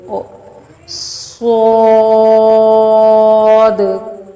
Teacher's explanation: صاد پر حروف ہے، اس کو موٹا کر کے پڑھیں گے۔ صاد، سیٹی کی آواز نکالتے ہوئے اس کو موٹا کر کے لے کے جانا ہے اور دال کے اینڈ، اس کے اینڈ پہ جو دال ہے اس کو تھوڑا سا ہلا کر کلکلا کر کے پڑھنا ہے۔